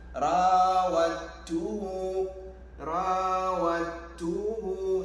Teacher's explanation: the dal has merged with the ta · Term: Idgham